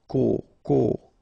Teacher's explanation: this o accent circumflex you tend to insist a little bit more on it so it's a bit uh lower